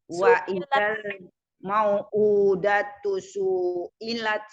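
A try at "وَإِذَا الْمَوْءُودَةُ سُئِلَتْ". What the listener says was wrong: Sunya pendekin.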